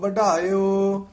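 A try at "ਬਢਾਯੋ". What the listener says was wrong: बढ़ायो टड्डा जिहड़ा ना भारा बोलना बढ़ायो नहीं कहना बढ़ायो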